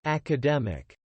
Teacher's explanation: pengucapan yang tepat adalah academic, pada penekanan suku kata ketiga, ya. Suku kata yang ketiga pada D itu mulai ada penekanan.